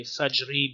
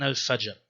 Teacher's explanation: you probably wouldn't say fajri because it's at the end, there's a speech pause, so more like al-fajr